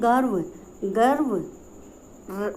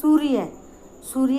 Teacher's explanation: जैसे सूर्य, सूर्य के अंदर य जो है य के ऊपर रे लगा है, लेकिन हम इसका उच्चारण जो है य से पहले कर रहे हैं। यानी ये सारे के सारे जो रे हैं ये हमेशा अधूरे रे होते हैं, स्वर रहित रे होते हैं।